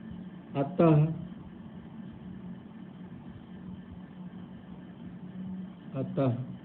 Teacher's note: विसर्ग का जो उच्चारण होता है, उच्चारण होता है वो एक्चुअली में हा के समान होता है, हा के समान, अह के समान होता है।